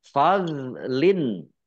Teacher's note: do sukun bukan qolqalah jangan dipantulkan